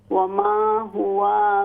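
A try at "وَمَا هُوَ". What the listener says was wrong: वाव ज़बर व, लंबा न करें, वमा हुआ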